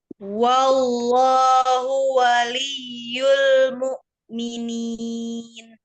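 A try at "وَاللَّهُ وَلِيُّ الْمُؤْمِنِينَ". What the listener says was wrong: lebih baik cuman di lafaz Allahnya lagi lamnya yang pertamanya kurang tawasul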